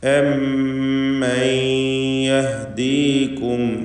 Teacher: സാക്കിനത്തായ നൂനിനെ ഇദ്ഗാം ബിഗുന്ന ചെയ്ത് ശേഷമുള്ള യായിലേക്ക് ഭാഗികമായി ലയിപ്പിച്ച് മണിക്കണം. ഇദ്ഗാം നാഖിസ് ബിഗുന്ന. · മീമും ഫാവും രണ്ടും തന്നെ ഷഫവിയായ അക്ഷരങ്ങളാണ്. അതുകൊണ്ട് മീമിൻ്റെ ഉച്ചാരണം അവ്യക്തമാവാൻ സാധ്യതയുണ്ട്. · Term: ഇദ്ഹാർ ഷഫവി